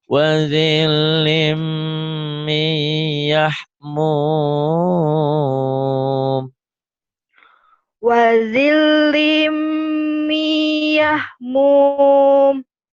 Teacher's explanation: wazil nyamber tapi nggak ditahan. Lim ditahan karena idgham biguna. Mi ditahan karena idgham biguna.